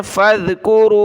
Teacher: ज़ाल पर ज़बान निकालें